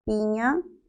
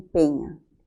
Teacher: según el desplazamiento horizontal es el mismo ambas son anteriores la diferencia nada más está según la altura de la lengua No es cierto no el desplazamiento horizontal sino el desplazamiento vertical · No es cierto no el desplazamiento horizontal sino el desplazamiento vertical la i se entiende que es una alta mientras que la otra la otra es media